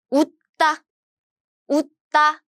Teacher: you stop your air from your throat